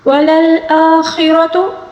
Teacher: را کو پر پڑھیں گے، را کے اوپر زبر ہے اس وجہ سے